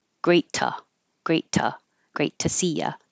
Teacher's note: I'm keeping this T a T because it's following a T in great. So if the T comes after an unvoiced sound, t, there's no vibration in the throat, then the T stays a T, but I'm still going to change the oo to a, great ta, great ta.